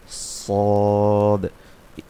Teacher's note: জিব্বার আগা সামনের নিচের যে সামনের দাঁতগুলো আছে তার নিচের দুই দাঁতের প্যাট ও আগার সাথে লাগাইয়া সদ